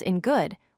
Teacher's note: where the N moves to the back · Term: Place assimilation